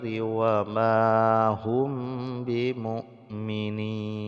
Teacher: Amanna ada nun yang bertasydid, kemudian mim sukun bertemu dengan ba, hukumnya ikhfa syafawi, jadi didengungkan, ya, diikhfakan, disembunyikan bunyi mim mati ke dalam ba, kemudian diikhfakan.